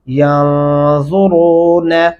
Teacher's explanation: اور را کو موٹا پڑھیں گے